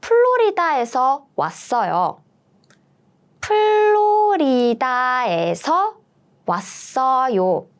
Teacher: we don't have F sound in Korean, so all the F sounds is turning to P, P, P, like Florida, not Florida, Florida.